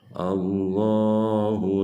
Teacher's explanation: lam jalalah tafkhim jadi harus ditebalkan